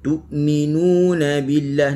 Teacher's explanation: Nuna kena muncung. Kenapa? Kerana nun bagi depan, kita kena muncung lah. · Tu terus berhenti, sifat syiddah